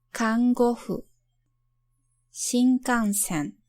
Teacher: This is an allophone of n, which occurs before other velar consonants, namely k and g.